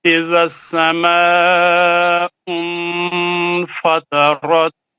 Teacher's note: نون کا آواز نہیں آنا، نون کو چھپا کے غنہ کرنا، اخفا اس کو بولتے ہیں